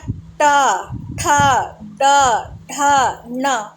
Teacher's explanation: यानी जो जीभ है हमारी वो तालु की थोड़ी पीछे टच हो रही है। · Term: मूर्धा